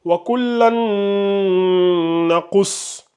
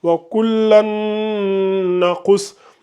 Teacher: Donc, vous faites la fusion entre le lan et le noun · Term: idgham avec la runna